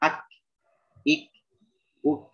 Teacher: Nah, itu terdengar aliran aliran udara yang keluar dari dalam mulut, hams.